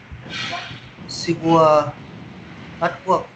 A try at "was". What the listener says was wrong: Was. Careful with your S sounds, like was. Sometimes it becomes wa. You are losing your S sounds. Just be careful with your S.